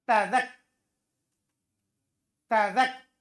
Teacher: Berat itu berpindah cepat ujung lidah. Ujung lidah habis ketemu pangkal gigi. Harus ketemu ujung gigi atas.